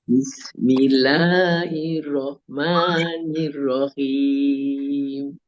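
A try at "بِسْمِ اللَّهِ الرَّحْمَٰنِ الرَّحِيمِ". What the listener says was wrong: ya, bagus. Masya Allah.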